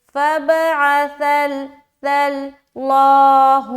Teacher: موٹا اور باریک کا جو مسئلہ ہے صرف اور صرف لفظ اللہ کا لام میں ہے. جب لفظ اللہ کا لام سے پہلے زبر ہو تو اس کو موٹا پڑھیں گے